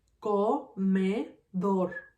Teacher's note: Me is gonna be my second syllable, and co is gonna be my third syllable. In this word, comedor, my strongest syllable is dor.